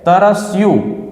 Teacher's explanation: અનુસ્વાર હોવા છતાં એના ઉપર કોઈ થડકારો અનુભવાતો નથી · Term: લઘુ